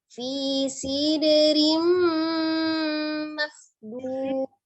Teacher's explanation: Jadi untuk dalnya di tengahnya itu kolkolah ya, dia tapi sugro saja, jadi tidak terjeda